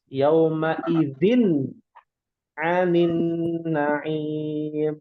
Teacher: Nah, ini bukan ikhfa tapi dibacanya izhar, tanwin bertemu ain. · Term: izhar halqi